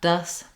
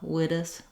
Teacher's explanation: You don't want a strong D, not dus, but just a light flap up, witus, with your voice on.